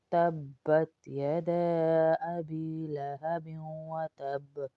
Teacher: تبت با پہ تھوڑا سا آپ سختی اور جماؤ پیدا کریں گے.